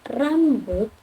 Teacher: Konsonan getar dalam kata rambut merujuk pada bunyi konsonan R yang dihasilkan melalui getaran cepat lidah di dekat langit-langit mulut bagian depan. Pada kata rambut, konsonan R di awal kata adalah contoh konsonan getar, di mana lidah bergetar ketika bersentuhan berulang kali dengan langit-langit mulut, lalu menciptakan bunyi khas R.